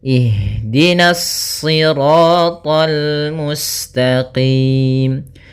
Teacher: Kemudian hati-hati meskipun to-nya termasuk huruf isti' dan huruf ibtbaq sehingga dia menebal surat to-nya, akan tetapi karena kita bertemu dengan huruf lam maka dia lamnya tipis, jangan ikut tebal, jangan tol itu tebal.